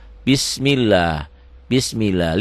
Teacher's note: lafaz Allahnya dibaca tipis Kenapa dibaca tipis karena sebelum lafad Allah baris di bawah